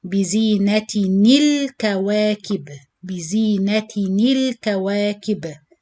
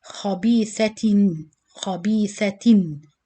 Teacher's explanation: If it's double kasra or double fatha or double dhamma, you change the noon sakin of tanween into kasra sound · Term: noon kasra sound